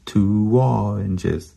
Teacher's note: It's because when we move from oo to aw, we go waw. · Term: w sound